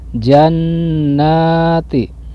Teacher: Bacanya harus didengungkan atau ditahan dulu antara 2 sampai dengan 3 harokat. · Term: guna